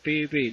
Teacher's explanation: el sonido va a producirse entre los dientes, ¿ya? Con la ayuda de la lengua, por supuesto. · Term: dentales